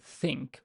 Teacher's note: your tongue kind of does not block but it just touches your teeth slightly to allow a little bit of air to come out and basically that little tiny almost blocked stream of air produces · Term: fricative